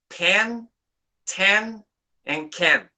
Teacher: paper moves because of the aspiration so definition of aspiration then extra puff of air extra puff of air that is aspiration